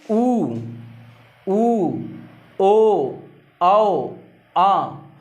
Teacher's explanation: आप खुद उच्चारित करके देखिए कि ओठ जो हैं गोल हो जाते हैं। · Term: वृत्तमुखी